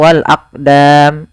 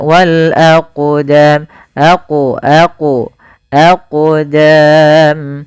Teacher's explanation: huruf qalqalah, maka cara membacanya yaitu kita memantulkan huruf qof-nya